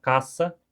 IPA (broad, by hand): kasa